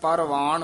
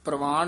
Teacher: ਰਾਰਾ ਪੂਰਾ ਪਰਵਾਨ ਬੋਲਣਾ, ਪ੍ਰਵਾਨ ਨਹੀਂ ਕਹਿਣਾ। ਜੇ ਪ੍ਰਵਾਨ ਕਵਾਂਗੇ ਤਾਂ ਹੇਠਾਂ ਰਾਰਾ ਲੱਗ ਜਾਂਦਾ।